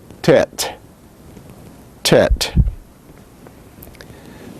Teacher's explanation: similar or the same as the letter t in english like the t of ten unaspirated unlike the other t's that we have looked at tet tet